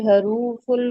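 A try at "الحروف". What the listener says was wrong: अच्छा सिस्टर, इसको ना हुरूफ कहें, हुरूफ, हु, देखिए ये इसके ऊपर दोम्मा है ना, ये जब हम टाइटल पढ़ते हैं ना, असल में ये सिर्फ कोशिश क्या है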